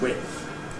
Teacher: some people assimilate it and make the whole thing voiceless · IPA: /wɪtθ/